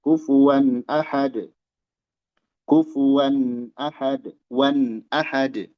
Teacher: Halq huruf ee hamzah itu keluar dari makhraj tenggorokan ya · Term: izhar halqi